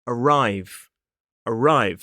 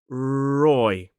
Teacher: the tip of the tongue doesn't touch the roof of the mouth. In fact, the sides of the tongue are more up tucked into the teeth.